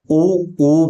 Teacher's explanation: होठ लगभग मिल चुके हैं पूरी तरह नहीं मिले बीच में स्पेस है अगर पूरी तरह मिल जाते तो उ फिर स्वर ही कैसे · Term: ओष्ठ